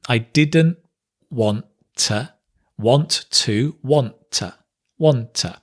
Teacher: here we connect the didn't and the want but we dropped the t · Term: drop the T